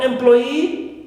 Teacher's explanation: Also for employee, right, we stress ploy, clear, second syllable, and not e, which is normally, right, that suffix.